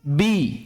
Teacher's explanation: jadi 'i' ini benar-benar 'i', bukan 'e'